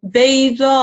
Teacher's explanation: in waqf, we're going to just pause on the hamza sakin, and there's going to be a slight jerk at the end